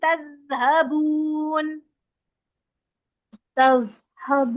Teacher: दाल में सीटी नहीं आएगी और दाल की आवाज चलेगी जबान बाहर निकाल के